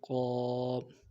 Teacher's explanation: قاف موٹے حروف میں سے ہے، قاف کو موٹا ادا کرنا ہے، اور ساتھ الف مدہ ہے، الف مدہ کو ایک الف کی مقدار میں کھینچنا ہے۔ قاف الف زبر قاف، موٹا کرنا ہے، قاف، اور ایک الف کی مقدار میں کھینچنا ہے۔